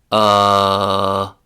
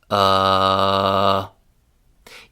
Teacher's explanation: your mouth opened less wide with uh than it did with ah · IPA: ʌ